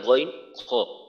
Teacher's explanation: হলকের বা কণ্ঠনালীর শেষ থেকে উচ্চারিত হয়